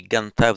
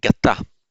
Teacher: what happens in the past participle is that the nasal, the n, drops out